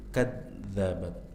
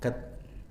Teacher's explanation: zal diucapkan dari ujung lidah menempel dengan ujung-ujung gigi seri atas, ya, dan dia memiliki sifat rakhawah, ada aliran suara, jangan dibaca mirip dal, kadzabat, jangan dipotong kad, ya, masih ada aliran suaranya, bukan kad tapi kadzabat. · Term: zal bertasydid